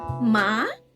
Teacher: rising tone, like you are asking the question